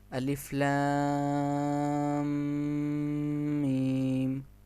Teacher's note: اس کے بعد الفاظ کو لمبا کر کے پڑھنا، اگر کسی لفظ پر کھڑی زبر، کھڑی زیر اور مد ہوگی تو ان کو لمبا کر کے پڑھا جائے گا، جیسے الف لام میم۔ الف لام میم میں لام اور میم پر مد ہے، اس لیے ہم نے اس کو لمبا کر کے پڑھا